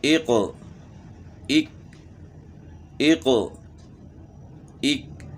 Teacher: اب ہم نے زیر کے ساتھ جو ہے اس کو پڑھنا ہے، ایقو ایک ایقو ایک، یعنی موٹے قاف کی آواز موٹی ہوگی اور دوسرا کاف جو ہے اس کی آواز باریک ہوگی